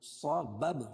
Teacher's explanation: صاد کو موٹا پڑھیں گے، حروف مستعلیہ میں سے ہے